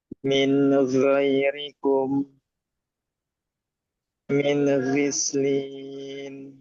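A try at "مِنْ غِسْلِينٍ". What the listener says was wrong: Nah, jangan mantul. Min gislin.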